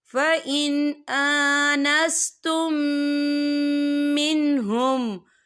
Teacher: اذا بلغوا النکاح فَإِنْ آنَسْتُم مِّنْهُمْ، یہ دیکھیں فَإِنْ آنَسْتُم، یہاں میم ساکن ہے، میم ساکن کے بعد جو ہے میم مشدد والا حروف آ رہا ہے، تو یہاں پر ادغام شفوی ہوگا، ہم پچھلے میم کو اگلے میم میں مدغم کریں گے، اور ہم یہاں غنہ بھی کریں گے۔